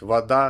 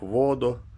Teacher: То есть вода на последний слог, воду на первый слог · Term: ударение